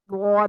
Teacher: अच्छा, इसके अलावा जुबान की करवट से अदा होने वाला हर्फ जो है वो है द्वाद।